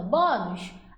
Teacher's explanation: Bônus, qual é a sílaba mais forte? É o bom.